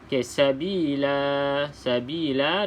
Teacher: Alif kat sini bermaksud kena panjangkan dua harakat